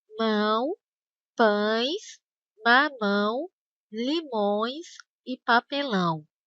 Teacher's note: ditongo nasal que quando o ar sai também pelo nariz